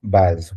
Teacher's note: S is between two vowels, so it's going to sound as Z.